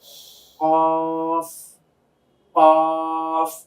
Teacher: জিহ্বার গোড়া, তার বরাবর উপরের তালুর সঙ্গে গিয়ে লাগবে।